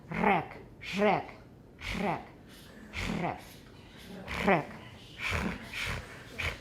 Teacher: So it's a regular alveolar trill, but it's fricative. So we've got more noise in there. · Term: alveolar fricative trill